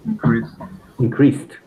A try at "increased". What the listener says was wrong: D at the end.